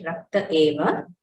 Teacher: The visarga elides and we get rakta eva.